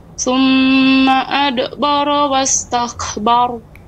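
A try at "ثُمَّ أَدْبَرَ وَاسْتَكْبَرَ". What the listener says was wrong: Ya, tidak adbara, ringan ya pantulannya. ya, mungkin masih terbiasa sebelumnya adbara sehingga seperti tertahan. Adbara ada jeda, ada tertahan. Adbara harusnya mengalir.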